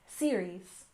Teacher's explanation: finally we have series finale with a stress on the first syllable